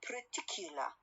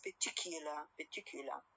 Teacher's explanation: the American one is pronounced like particular. R sound is a syllabic one. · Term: syllabic R